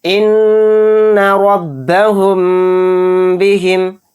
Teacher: मीम साकिन के बाद बा आ गया तो इसमें गुन्ना के साथ इख्फ़ा होगा, यानी इख्फ़ाए शफवी का कायदा हो रहा है।